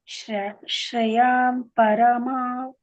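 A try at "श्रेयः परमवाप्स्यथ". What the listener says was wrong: ವಾಪ್ಸ್ಯತ. ಅಲ್ಲಿ ಪಾಕೆ ಸ ಎರಡು ಒತ್ತಕ್ಷರ ಇದೆ. ಶ್ರೇಯ ಪರಮವಾಪ್ಸ್ಯತ.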